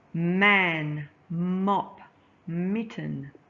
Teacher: put your lips together air comes out of your nose not your mouth